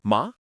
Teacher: This one should feel more natural to English speakers because it resembles the rising pitch you use when asking a question like really or what. The pitch starts in the middle and gently rises upward. It shouldn't shoot up quickly or sound overly dramatic. · Start in the middle and glide upward like you're asking something. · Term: second tone